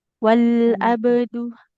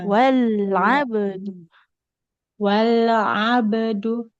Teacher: Nah, wal abdu huruf ainnya ya. Huruf ainnya itu enggak boleh jadi huruf hamzah. Jangan wal abdu.